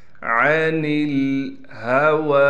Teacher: عَنِ الْهَوَى، نون کو لام سے ملا دیں گے، ہا کو صاف کر کے گلے سے نکالنا ہے، جو گلا سینے کی طرف جس کا رخ ہے۔ واو پر کڑا زبر ہونے کی وجہ سے واو کو ایک الف کی مقدار کھینچیں گے۔